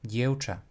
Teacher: the v will not change to its paired consonant f, it will change to the vowel u. And this also happens, funnily enough, at the end of a word, regardless if it is followed by a voiced or unvoiced consonant. · So by default, not at the beginning of the word, the letter v will actually assimilate to the vowel u